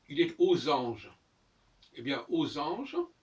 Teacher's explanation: le X se prononce, la liaison se fait avec un S. Aux anges. Ça s'écrit AUX.